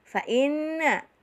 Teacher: nun bertasydid dinamakan huna musaddadah atau huna asli, ditahan dan didengungkan 2 sampai 3 ketukan.